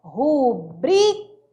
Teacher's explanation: Mas só que a pronúncia correta não é rúbrica, porque rúbrica não é proparoxítona, sim paroxítona.